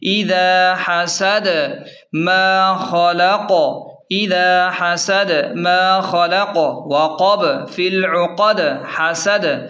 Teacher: اس سورت کی خاص بات یہ ہے کہ اس کی ہر آیت کے آخر میں وقف کرتے وقت قلقلہ یعنی جھٹکا ہوتا ہے